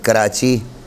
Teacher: جب زبان کا وہ حصہ جو جڑ سے متصل منہ کی جانب ہے، آگے کی طرف آ گیا ہے، تالو کے مقابل حصے سے ٹکرائے تو حرف کاف پیدا ہوتا ہے